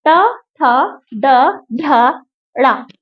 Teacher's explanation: हमारी टंग जो है रोल करके ऊपर रोल हो जाती है तब जो आवाज निकलती है वो मूर्धा